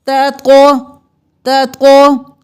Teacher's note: اب تا اور تقو میں فرق کرنا ہے، تا باریک پڑھیں گے، تقو موٹا پڑھیں گے